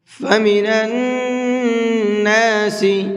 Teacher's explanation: نون کے اوپر تشدید ہے تو اس نون کے اندر غنہ کر کے پڑھیں گے